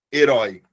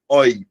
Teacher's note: Se você pegar a palavra herói, se você pegar essa palavra, você vai perceber o seguinte: essa palavra ela vai ter aqui um acento no oi. Oi. Por quê? Porque é oral e é aberto.